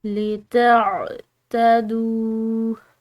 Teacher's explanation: دال کے بعد واو ساکن کی وجہ سے اس کو ہم لمبا ادا کریں گے